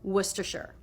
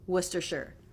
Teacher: Don't pronounce that first R, and also make sure you put the schwa in the last syllable.